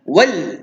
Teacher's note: Hujung lidah sentuh langit-langit kerat atas.